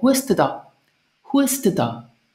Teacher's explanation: we use this dann in questions, and often the N is dropped.